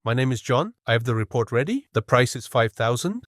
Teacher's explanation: the tendency to end a declarative sentence with a rising intonation, making it sound like a question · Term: high-rising terminal